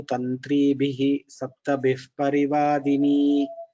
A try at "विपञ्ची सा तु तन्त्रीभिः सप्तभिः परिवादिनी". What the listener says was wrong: We have to combine the two padas and one line because you broke at tantribhi.